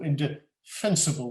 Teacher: you can see that there is a stress on the third syllable